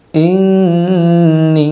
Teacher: نون پر جب تشدید آ جائے تو نون کو غنّے کے ساتھ پڑھے گی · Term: نون مشدد